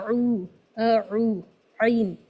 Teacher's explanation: عین جو ہے وہ مڈل تھروٹ سے یا وسط حلق سے ادا ہوتا ہے